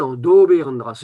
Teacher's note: Mais si je dis en doberdrasse, en appuyant sur le o, pas de problème, tout le monde va comprendre.